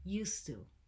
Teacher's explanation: started but first things first pronunciation it's used to used to we drop the d because the t sound is stronger and so it becomes a single word